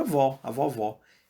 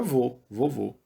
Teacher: com som aberto ver com o fica avó a vovó e o som fechado fica vô vô vô